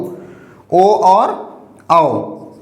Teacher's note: ओ दऊ तो कंठ ओष्ठौ, ओ और औ का उच्चारण कंठ और ओष्ठ दोनों की सहायता से किया जाता है